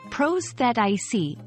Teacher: It sounds like prosthetic with the emphasis on the second syllable. Remember, the th is voiced softly, like in this.